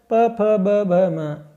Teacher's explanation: प वर्ग के अंतर्गत प, फ, ब, भ, म वर्णों का उच्चारण स्थान ओष्ठ है।